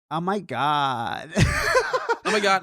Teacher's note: You just got a bit of vocal fry.